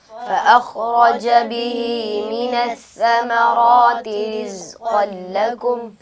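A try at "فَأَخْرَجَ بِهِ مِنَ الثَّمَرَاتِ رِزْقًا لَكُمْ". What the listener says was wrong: बेटा आपके खौ की अदायगी में कलकला हो रहा है। खौ को जब अदा करें उसमें कलकला नहीं होना चाहिए, आवाज़ अपने मखरज में दोबारा लौट कर ना आए। फ़अख़रज नहीं, फ़अख़रज बिहि मिनस्समराति रिज़्क़न लकुम।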